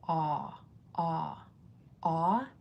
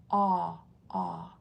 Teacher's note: It's spelled like this. This AU is comparable to a short O sound, ah, but it's deeper. Your jaw is dropped even more. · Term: deep jaw-dropping ah